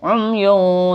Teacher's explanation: dhammatain bertemu fa, ini namanya juga ikhfa hakiki. Jadi samarnya benar-benar samar.